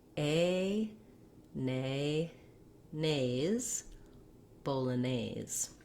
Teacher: Just like our diphthong O, the A is long. It starts off tense, and then the jaw relaxes. A, and the tongue lifts. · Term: diphthong A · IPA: /ˌboʊləˈneɪz/